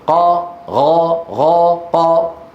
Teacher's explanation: من العرب من يخلط القاف بالغين والغين بالقاف لقرب المخرج